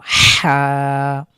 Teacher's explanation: লেটারটির নাম হলো হা এই বর্ণটি আমাদের হলক বা আমাদের কণ্ঠনালীর কণ্ঠনালীর ঠিক মাঝখান থেকে উচ্চারিত হবে একটু চাপ পড়বে